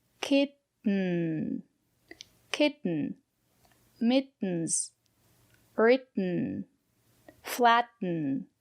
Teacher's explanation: the air don't release the air stop the air kit so it's a stop T and then it falls into n